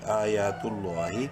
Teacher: گے تا لام پیش تو لفظ اللہ سے پہلے پیش ہے لام کو بولڈ اور ایک الف برابر لمبا کریں گے کھڑی زبر کی وجہ سے